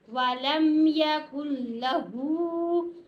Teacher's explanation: اکثر لوگ یہاں پر کنفیوز ہو جاتے ہیں، وہ نون پڑھے کہ لام پڑھیں، وہ غلط پڑھ جاتے ہیں. یہاں پر ہم نے نون نہیں پڑھنا، لام ہی پڑھیں گے. کاف نے لام کے ساتھ ملنا ہے، کل لا، ٹھیک ہے.